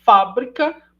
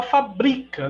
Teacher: né paroxítona né então percebam que de novo a mesma configuração a mesma sequência de fonemas Entretanto a primeira temos é uma proparoxítona a segunda é uma paroxítona